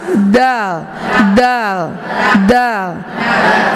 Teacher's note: ujung lidah dirapatkan dengan belakang gigi seri yang atas